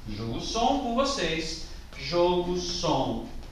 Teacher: E note que tem uma regra particular, porque não pode ser qualquer palavra de duas sílabas. Precisa necessariamente ter mais força a sílaba inicial, que é quando eu piso com a minha pulsação. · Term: paroxítona